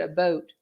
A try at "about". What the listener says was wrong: You said a boat.